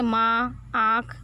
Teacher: ऐसे स्वर जिनका उच्चारण नाक और मुंह दोनों से होता है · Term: अनुनासिक